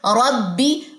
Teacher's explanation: با کہاں سے ادا ہوتا ہے؟ بند ہونٹوں کے گیلے حصے سے